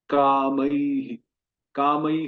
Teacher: जब किसी भी अक्षर के अंत में ऐ रहे, ऐ, और फिर विसर्ग आए, उसमें विसर्ग में ह के साथ छोटी ई का उच्चारण होगा।